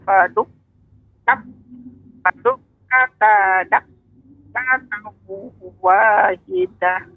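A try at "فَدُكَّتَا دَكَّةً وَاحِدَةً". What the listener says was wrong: Untuk tasydid, untuk tasydid pada kaf tidak terlalu lama ya. Jadi fadukkatau dakkatau.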